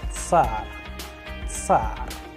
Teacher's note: in order to pronounce it properly, you have to make a combination of two different sounds, T and S